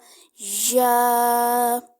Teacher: زبان کے درمیان اور تالو کے درمیان سے یا کو ادا کرتا ہے، یعنی آپ کا تالو کا درمیان اور زبان کا درمیان آپس میں ٹچ ہوگا، یا، ٹھیک ہو گیا۔